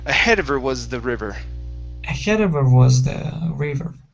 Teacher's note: the middle of the of the sentence okay and it's not it does not start a sentence or it's not following a comma we can drop it okay we can drop that h